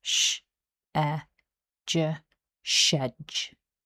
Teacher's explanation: Syllable one starts with the unvoiced sh sound followed by the short e vowel then the voiced j sound.